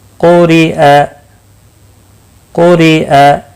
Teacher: قاف مستعلیہ ہے پر پڑھا جائے گا. را زیر کی وجہ سے باریک پڑھا جائے گا